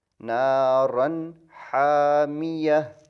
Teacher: غنہ نہیں ہوگا رن کے اوپر کہ اس تنوین کے بعد فوری حا آ گیا